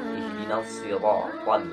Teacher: Awas, pengucapan huruf ro ini tidak lebih dari 2 getaran.